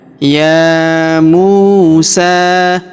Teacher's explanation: huruf mu kita panjangkan 2 harokat karena waw sukun di depannya.